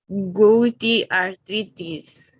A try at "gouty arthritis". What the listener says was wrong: Okay, it's not gouty. It's like an A, an open A in Spanish. Gouty. Gouty arthritis. It's an exception, the OU, like an A, it's an exception in pronunciation, but don't worry.